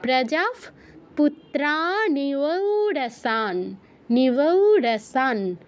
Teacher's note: বিসর্গের পর প বা ফ আছে, মানে প আছে, এজন্য আমরা বিসর্গস্থলে ফ হসন্ত উচ্চারণ করছি।